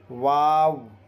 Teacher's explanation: دونوں ہونٹ کھلے رہ کر واو غیر مدہ ادا ہوتا ہے۔